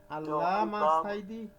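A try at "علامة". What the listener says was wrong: আপনি তো দুই আলিফ টান দিয়ে দিচ্ছেন, একালিফ দিলেই হবে। আল্লামা ইকবাল। যেমন আপনি যদি একটা পাকিস্তানি লোকের সাথে কথা বলেন, সে তখন আমরা এইভাবে বলি আল্লামা ইকবাল কা নাম শোনা।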